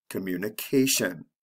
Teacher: in the last column with the tion the stress comes right before the ending so it's the second to the last syllable